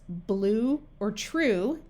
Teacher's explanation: you do not hear the Y sound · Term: long u sound